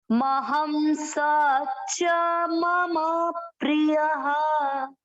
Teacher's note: चौथा चरण महम, म में अमिक्स किया, ह के ऊपर अनुस्वार है, महम, स में अमिक्स किया, च में अमिक्स किया, म दोनों अमिक्स करना है दोनों में, म प्री, प्र आधा प आधा र पूरा, प्री, य प्रिय, य में अ की मात्रा है तो विसर्ग को पढ़ेंगे ह